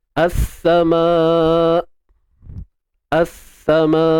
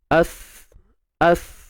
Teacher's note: Lam tu kita tak baca dah lah. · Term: alif lam syamsiah